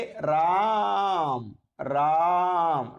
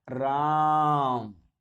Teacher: जैसे हे राम, राम, रा का उच्चारण मैंने दीर्घ स्वर से भी ज्यादा लिया, राम। उसी तरह से ओम, ओम, ओ का उच्चारण लंबा लिया है, रा का उच्चारण लंबा लिया है। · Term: प्लुप्त स्वर